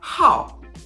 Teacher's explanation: and when you finish it it's quieter so you have how you can hear that I started off loud and then I end up quieter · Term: tone four, tone 4